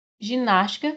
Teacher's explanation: ginástica a sílaba mais forte é o nas